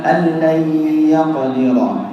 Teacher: Di situ ada idgham bi gunnah, ya. Sehingga ada suara yang keluar dari hidung.